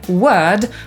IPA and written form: wɜːd (word)